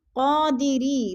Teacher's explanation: قادری، ری کے نیچے یا زیر ہے یا ساکن سے پہلے غا کے نیچے زیر ہے تو یا مدہ. یا مدہ کو ہم نے ایک الف دو حرکات کے برابر کھینچ کر پڑھنا ہے